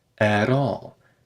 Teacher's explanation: That T in at turns into a tap. The T turns into a glottal stop before a consonant and a tap before a vowel.